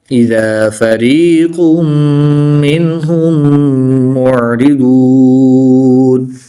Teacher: दो पेश की तनवीन के बाद मीम हरूफ यरमलून में से है तो यहाँ पर इदगाम माल गुन्ना होगा यानी गुन्ना करके पढ़ेंगे।